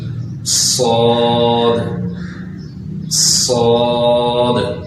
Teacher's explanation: صاد تو سین میں ہم نے یہ کیا تھا، سیٹی نکالتے تھے لیکن وہاں پر سیٹی باریک کر کے نکالتے تھے۔ صاد میں یہ کریں گے کہ سیٹی کو ذرا موٹا کر کے پڑھیں گے تو اس کی اصل آواز نکلے گی